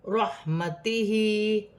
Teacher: ہا کے نیچے کھڑی زیر ہے، ایک الف کی مقدار کھینچ کر پڑھا جائے گا